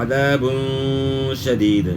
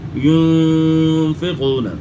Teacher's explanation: تنوین کے بعد اخفا کے 15 حروف میں سے شین ہے تو یہاں غنہ اخفا کے ساتھ ہوگا عذاب شدید. اور اس طرح کے پھر ينفقون، نون ساکن کے بعد اخفا کے 15 حروف میں سے فا ہے تو غنہ اخفا کے ساتھ ہوگا.